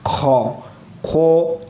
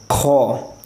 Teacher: तो अब इसके बाद है खौ, तो इसको पूर्वी पढ़ना है। खौ खौ ये गोल मुंह होता है वो नहीं करना, हमें मोटा करना है